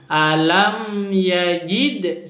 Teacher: Alam yajid, ada mim sukun berjumpa dengan ya, maka disebut dengan izhar safawi. Jadi jangan dibaca dengung, langsung alam yajid, seperti itu.